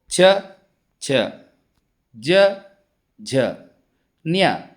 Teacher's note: ಇವುಗಳನ್ನು ಕಂಟ್ಯಾಕ್ಷ ಎಂದು ಕರೆಯುತ್ತೇವೆ ಹಾಗೆಯೇ ಚವರ್ಗ ಅಂದರೆ ಛ ಛ ಜ ನ್ಯ ಇವು ತಾಲವ್ಯದ ಸ್ಥಾನದಲ್ಲಿ ಅಂದರೆ ಬಾಯಿಯ ತಾಲವಿನ ಸ್ಥಾನದಲ್ಲಿ ಉತ್ಪತ್ತಿಯಾಗುವ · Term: ತಾಲವ್ಯದ ಅಕ್ಷರಗಳು